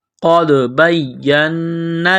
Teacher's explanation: قاف کو دال کے ساتھ ملانا ہے دال ساکن ہے تو یہاں پر قلقلہ کریں گے